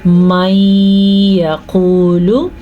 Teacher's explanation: یہاں پہ ادغام بالغنہ کا قاعدہ ہو رہا ہے کیونکہ نون ساکن کے بعد یا آیا ہوا ہے. قاف کو ہم پر پڑھیں گے کیونکہ قاف ہمیشہ ہی پر پڑھا جاتا ہے.